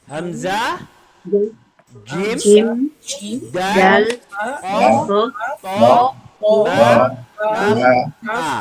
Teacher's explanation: Yang kuat adalah syiddah tahan suara terhenti.